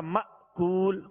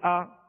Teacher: تو اس حمزے کو ہمیشہ یاد رکھیے گا کہ جھٹکا دے کر ادا کریں گے تو حمزہ ادا ہوگا. دوسرا حمزہ ساکنہ جب ہی ادا ہوگا جب اس میں جھٹکا دیں گے. اگر جھٹکا نہیں دیں گے تو نرمی پیدا ہو جائے گی جیسے آ، تو اب یہ کہ دوسرا حمزہ ادا نہیں ہوگا.